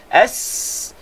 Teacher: huruf rakhawah s kan dia bunyi panjang